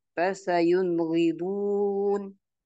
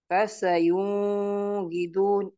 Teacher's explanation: Jadi tanwinnya dan nun sukunnya ketika bertemu dengan huruf ghain, maka cara membacanya langsung saja dibaca jelas. Tidak boleh dibaca dengung atau dibaca panjang